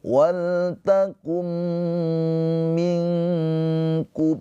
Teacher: Nun sukun bertemu dengan huruf kaf ini adalah ikhfa hakiki. Ditahan dua harakat.